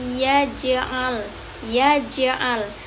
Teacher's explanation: Qalqalah sugra ini yaitu ya ketemu dengan jim mati. Nah, huruf jim ini termasuk ke huruf qalqalah. Nah, cara membaca qalqalah ini dengan cara dipanturkan. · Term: qalqalah sugro